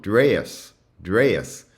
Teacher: And the thing that you can see in these transcriptions, and this is the thing that might be the most familiar to you about the Southern shift, is that the E is transcribed as A plus a schwa, so it's a diphthong